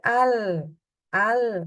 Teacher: kalau kita membaca huruf lam itu tidak kita sertai dengan hembusan udara. Jadi al, tidak ada keluar hembusan udara. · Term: jahar